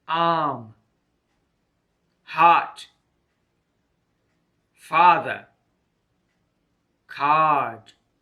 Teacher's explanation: a long vowel sound the mouth is wide open the tongue position is in the center of the mouth